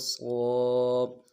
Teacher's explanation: سیٹی والا حرف ہے، اس کی سیٹی بھی موٹی نکلے گی